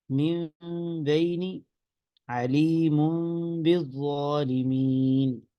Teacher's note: اس کو قلب کہا جاتا ہے اس لیے کہ یہاں پہ نون اپنی اصل آواز نہیں دے رہا، نون میم سے بدل گیا